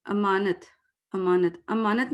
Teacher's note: جلدی جلدی ہم پڑھتے ہیں نا، تو زبر آدھا سا پڑھا جاتا ہے